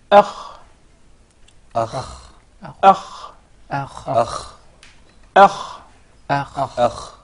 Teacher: The ghayn and the kha, the nearest or adna, the nearest part of the throat to the mouth.